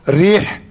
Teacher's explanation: Dia kena ikut dengan baris bawah dan kena ikut sifat dia, bukan reh. Reh tak betul lah.